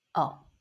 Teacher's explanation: fifth tone, very gentle and short, oh.